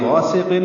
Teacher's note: غین پر ہے، الف مدہ ہے، 2 حرکات لمبا کریں گے، سین سیٹی جیسی آواز سے، قاف کو پر پڑھنا ہے